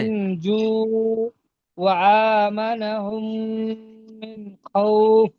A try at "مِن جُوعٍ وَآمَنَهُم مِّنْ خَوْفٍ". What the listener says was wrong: এখানে একটা আপনার একটু ভুল হয়ে যাচ্ছিল, এই তটা, তটা কলকলাটা হচ্ছিল না। কলকলা মানে কি? কি? কলকলা মানে কি? কলকলা মানে আপনার আওয়াজটা মাখরাজে লাগবে, তো আর মাখরাজে লেগে ফির ফিরে আসবে।